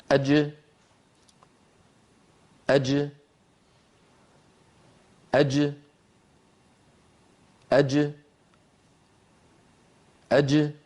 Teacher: الجيم تخرج بتباعد وسط اللسان عما يحاذيه من الحنك الأعلى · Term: حرف الجيم